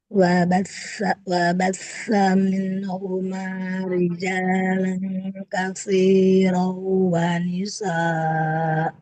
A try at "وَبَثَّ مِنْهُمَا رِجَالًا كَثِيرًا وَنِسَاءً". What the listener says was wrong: Tidak wanisa. Kalau tanwin fathah pada hamzah di akhir dibaca panjang 2 harokat. Wanisa.